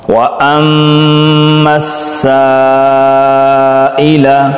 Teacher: میم مشدد غنہ، میم سین کے ساتھ مل جائے گی، سین مشدد، سین کو 2 دفعہ پڑھیں گے